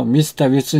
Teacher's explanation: Mr. Wilson을 그 꼬리를 위로 올려서 그 억양을 올린 것에 주목하세요.